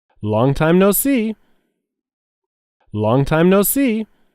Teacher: the words long time no are all said separately and there is a stress on the word see